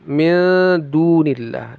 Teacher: du panjangnya dua harakat mad asli · nun sukun bertemu dal, ikhfa disamarkan lalu didengungkan. Midunillah, panjangnya 2 harokat mad asli.